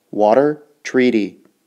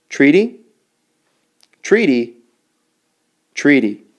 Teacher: The sound of T sounds a lot like the T in water. It sounds like a flap.